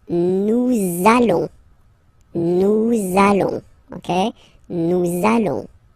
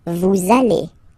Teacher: this little link between the words, so it does mean that you will have to pronounce this z sound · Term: liaison